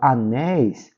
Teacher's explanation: essa palavra é uma palavra paroxítona e na palavra Anéis ó a última sílaba é a sílaba tônica é a sílaba forte